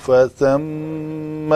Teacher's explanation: میم کے اوپر شد تھی تو اس کو دو حرکت کے برابر غنہ کرنا تھا